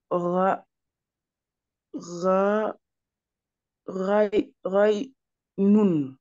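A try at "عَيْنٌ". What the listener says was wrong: Aïnoun, en fait, toi, tu me dis Raïnoun. Raï, tu me dis Raï, alors que Raï, le problème, c'est que je ne peux pas te dire que c'est bon parce que Raï, c'est une autre lettre. Faut sortir une lettre sans. Parce que quand tu dis Raï, Raï.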